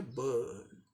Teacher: British English में आर silent है, बर्न। उसी का फिर अमेरिकन में बर्न, बर्न, बर्न, बर्न।